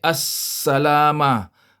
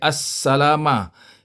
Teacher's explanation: Dia bunyi, apabila bertemu dengan huruf sin, dia bunyi as-salama. Dia tak bunyi al, dia bunyi as-salama. Yang bunyi al itu apabila bertemu dengan huruf kamariah, ya. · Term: idgham syamsi